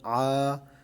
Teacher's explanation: سب سے پہلا لفظ عین الف زبر آ، یہ حروف مدہ میں سے ہے۔ اس کو ایک الف کی مقدار کھینچ کر پڑھیں گے یا 1 سیکنڈ کی مقدار کھینچ کر پڑھیں گے۔